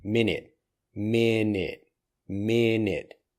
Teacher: The T for minute basically disappears.